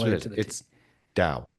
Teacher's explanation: unaspirated T sound meaning there's no puff of air released between pronounces dao.